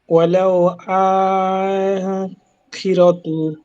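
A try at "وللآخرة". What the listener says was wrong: ওয়ালাল আখিরাহ, সামনে গেলে পড়বো আখিরাহকে, আখিরাতুকে নেই, আখিরাতুকে আমরা আখিরাহ কেন পড়ছি এটা সামনেই পড়বো। ওয়ালাল আখিরাহ,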